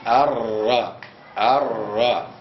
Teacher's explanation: ما يقابله من اللثه قبله مع قبل النون بقليل تخرج الراء الراء تخرج من طرف لسان ادخل في في ظهره مع ما يقابله